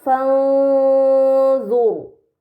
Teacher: Kemudian pada kata fanzur, terdapat ro sukun sebelumnya ada harokat dhammah pada huruf dha, maka ro tersebut harus dibaca secara tebal